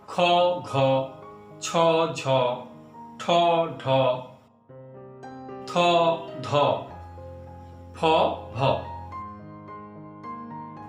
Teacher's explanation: যে সকল ব্যঞ্জন উচ্চারণের সময় শ্বাসবায়ু বেশি পরিমাণে বা জোরে নির্গত হয় তাদের বলে মহাপ্রাণ বর্ণ। প্রত্যেক বর্গের দ্বিতীয় ও চতুর্থ বর্ণগুলিকে মহাপ্রাণ বর্ণ বলা হয়।